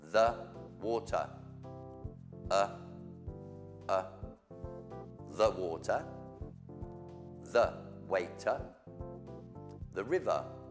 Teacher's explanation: When the R is the last letter in a word in English, forget it. Pretend it's not there. Unless it's connected to another word, but that's just an exception.